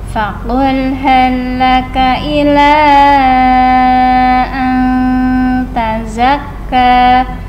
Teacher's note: sukun bertemu ta dibaca ikhfa ya, dengung